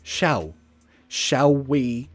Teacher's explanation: I change the L to more of a ooh sound shall shall we so those two words they blend nicely together · I changed the L to more of a ooh sound.